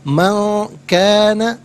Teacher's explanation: نون ساکن کو اخفا کے ساتھ پڑھیں گے۔ اخفا کہتے ہیں ناک میں آواز لے جا کر گنگنانا۔